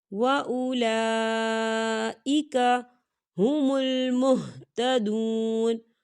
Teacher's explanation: لام پر کھڑی حرکات بھی ہے اور اس پر مد بھی ہے، تو ہم اسے 4 حرکت کے برابر کھینچیں گے